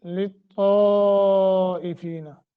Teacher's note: طا کو موٹا بھی کرنا ہے لمبا بھی کرنا ہے مد متصل ہے